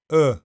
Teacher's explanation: U is a short sound made with the tongue pulled slightly back or central. U, the jaw close mid and the lips relaxed. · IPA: /ʊ/